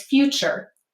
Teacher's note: Well, if you say future, you'll notice the T begins to assimilate to a ch sound, so it's easier to say, and it becomes future.